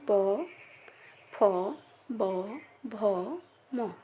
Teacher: যেগুলো উচ্চারণের সময় আমাদের ঠোঁট স্পর্শ করে, যেমন প, ফ, ব, ভ, ম, এগুলোকে বলবো আমরা ওষ্ঠ ব্যঞ্জন।